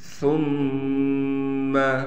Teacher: میم پر غنہ کریں گے تشدید ہونے کی وجہ سے